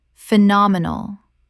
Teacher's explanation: 4 syllables with the stress on the second.